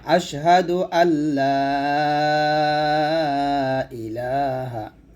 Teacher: এলাতে 3 আলিফ টান দিবেন